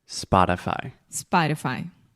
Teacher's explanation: So 2 things to think about here. First, the first vowel sound is ah, spa. Just like I'm going to the spa to get a massage.